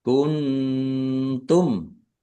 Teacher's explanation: Kuntum nun sukun bertemu dengan huruf ta bacaan ikhfa dibaca samar-samar.